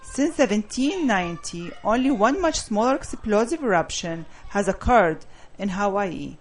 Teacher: When you get to Hawaii, your tone drops because you're done.